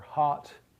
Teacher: But for hot, your lips don't round.